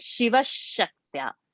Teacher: whenever there is going to be a sh after a visarga, the visarga sound will be sh